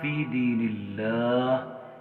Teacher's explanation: لفظ اللہ یہاں پر باریک پڑھا جا رہا ہے